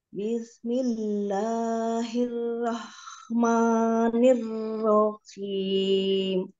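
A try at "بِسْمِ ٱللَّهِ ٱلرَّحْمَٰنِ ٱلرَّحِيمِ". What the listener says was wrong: Haknya jangan terlalu ke bawah, ha di tengah. Bismillahirrahmanirrahim. Ya, nanti dilatih lebih tengah lagi ya haknya. jadi kayak apa? Kayak ada kotor gitu. Harusnya bersih.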